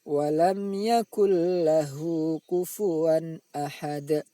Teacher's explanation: Cara membaca bacaan idgham bila hunnah adalah bunyi nun sukun atau tanwin dimasukkan ke dalam bunyi huruf idgham bila hunnah tanpa didengungkan · bunyi nun sukun dimasukkan ke dalam bunyi lam, lalu tidak boleh didengungkan